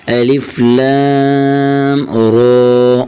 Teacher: را کے اوپر صرف کھڑی زبر ہے، کھڑی زبر جتنا ہی اس را کو کھینچیں گے. الف لام را، اور یہ را کو موٹا کر کے پڑھیں گے.